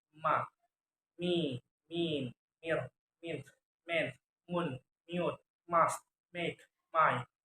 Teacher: Voice bilabial nasal sound ma, me, mean